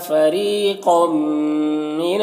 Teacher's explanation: تنوین کے بعد میم حروف یومن میں سے تو ادغام ناقص ہوگا، غنہ کے ساتھ پڑھیں گے